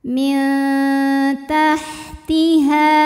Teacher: Tajri min ada hukum ikhfa aqrab sebab nun sukun menghadapi huruf ta. Cara bacanya nun disamarkan ke ta disertai dengung, dengungnya sedikit. Min tahtiha.